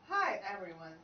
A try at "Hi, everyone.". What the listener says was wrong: Hi, everyone. Slur them together. Hi, everyone. Yeah, you're stopping for the E on every. I'm not.